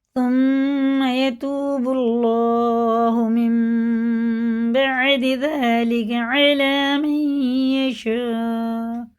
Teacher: یہ دیکھیں میم پہ شد ہے تو غنہ کر کے پڑھیں گے، واو ساکن سے پہلے پیش ہے، الٹے پیش کی طرح کھینچ کے پڑھیں گے، اور اللہ کا لام پیش کے ساتھ ہے، پور پڑھیں گے.